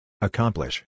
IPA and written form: əˈkʌmplɪʃ (accomplish)